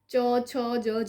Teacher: જીભ અને તાલુને સ્પર્શ કરે છે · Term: તાલવ્ય